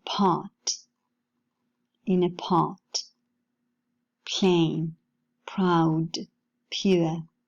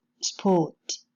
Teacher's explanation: we can find an aspirated allophone in part